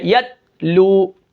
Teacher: یہاں پر آواز یتو آواز نکلتی ہے، یہ حروف قلقلہ ہیں، لیکن یہاں پر تا باریک ہے یتلو، اس کو میں ہلنے نہیں دوں گا